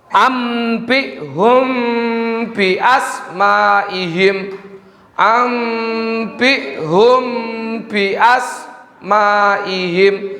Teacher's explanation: Jadi huruf mimnya disamarkan menjadi seolah-olah masuk ke dalam huruf ba. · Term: ikfa syafawi